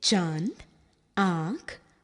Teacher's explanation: अनुनासिक इसका उच्चारण मुख और नासिका की सहायता से होता है